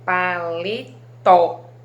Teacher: Se eu falo paletó, o tó é o que eu pronunciei com mais intensidade